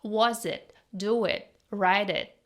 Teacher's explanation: She barely pronounced the t sound at the end of many words. · It's replaced with a glottal stop.